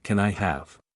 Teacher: the can I often Blends together in fast speech